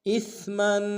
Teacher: حمزہ کو سا کے ساتھ ملائیں گے، میم کے اوپر تنوین غنہ کریں گے